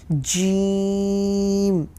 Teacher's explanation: جیم، زبان کے بیچ والے حصے سے ادا ہوتا ہے